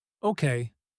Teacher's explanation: Okay, falls calmly, almost like steadying ground beneath shaky feet.